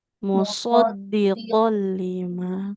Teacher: Mus dari musnya lebih tebal